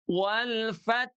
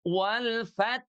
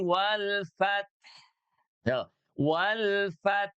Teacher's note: Huruf H sukunya itu harus mengalir suara juga nafasnya.